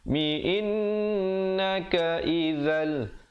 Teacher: idgham bila gunnah, masuk tanpa dengung, tanwin bertemu lam. Asalnya izan tapi baca izal di sini.